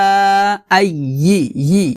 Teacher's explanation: ইয়া জিহ্বার মধ্যখান উপরের তালুর সঙ্গে লাগিয়ে উচ্চারণ করতে হবে।